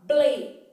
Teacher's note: o B também é uma consoante bilabial o l uma consoante alveolar Então quando você fala bem você vai fechar a boca Depois